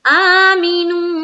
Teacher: آمے کھڑا زبر ہے تو ایک الف کے برابر ہم کھینچیں گے